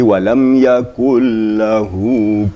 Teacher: nun mati bertemu lam. Itu dalam bacaan betul-betul dihilangkan nunnya. Langsung kepada lam. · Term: idgham bila gunnah